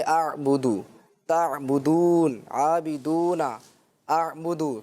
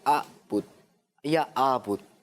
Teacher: عین جو ہے وہ درمیانے حلق سے ادا ہوتا ہے، بالکل مڈل سے